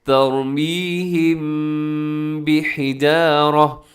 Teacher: میم ساکن کے بعد حرف با آ جائے تو وہاں پر کیا ہوگا؟ اخفا ہوگا، مطلب اپنے آواز کو ناک میں لے کے جانا ہے، غنے کے ساتھ اخفا ہوگا۔ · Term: اخفاء شفوی